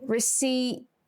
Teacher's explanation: But in this word, we finish it with the letters PT. So the P here is not said.